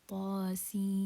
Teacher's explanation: So this is not a shadda. So it's going to be mad lazim harfi mukhaffaf, because it's not a shadda, it's a sukun. So we prolong it for 6 counts.